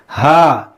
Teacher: اس کا مخرج ہے حلق کے نیچے والے حصے سے زیادہ ہوتا ہے, بالکل نیچے والے حصے سے